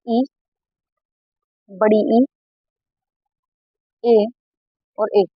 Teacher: इ बड़ी इ ए बोलोगे तो सिर्फ अग्र भाग जो है ना जीभ का वही उठ रहा है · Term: अग्र स्वर